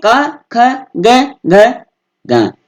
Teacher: कवर का जो उच्चारण स्थान होता है वो ये कंठ होता है